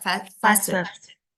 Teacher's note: Jadi bukan kayak t, nggak ada t soundnya ya. Tapi T-nya tipis banget.